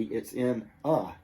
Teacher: But in day-to-day English, two things happen. One, the a gets changed. It gets transformed to that lazy schwa sound